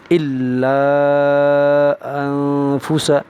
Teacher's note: اوپر مد لگا ہوا ہے، یہ مد منفصل کہلاتا ہے، مد منفصل کی مقدار 4 الف کے برابر ہے، اس لیے 4 الف کھینچ کر پڑھیں گے